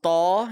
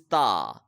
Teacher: In Taw, more area of the tip of the tongue is being covered, and in the letter Ta, less area of the tip of the tongue is being used.